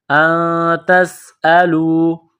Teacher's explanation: نون ساکن کے بعد تا ہے، حروف اخفا ہے تو نون ساکن پر غنہ کریں گے